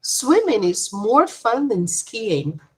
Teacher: Sometimes we stress the comparative adjective. The word then is less important, so we don't stress it. We say it quickly. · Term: weak form of then